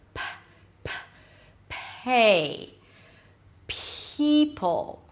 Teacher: So it feels like you have a little H right after. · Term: P sound